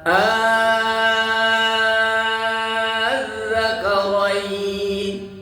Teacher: dengan ibdal diganti hamzah keduanya dengan huruf mad · panjangnya enam harakat tidak boleh ku kurang karena mad la lazim